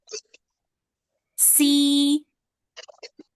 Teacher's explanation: Nah, tipis ya. Jangan diangkat pangkal lidahnya. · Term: huruf sin